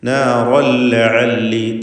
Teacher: തൻവീനിനെ പൂർണ്ണമായും ശേഷമുള്ള ലാമിൽ ലയിപ്പിച്ച് മണിക്കാതെ ഉച്ചരിക്കുക. ഇദ്ഗാം ബിഗൈരി ഗുന്ന.